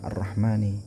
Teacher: Kalau asyamsiyah contohnya ar-rahmani, ini asyamsiyah, al-nya hilang, ar-ra-nya yang dibaca